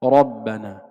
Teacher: الراء المفتوحة حكمها التفخيم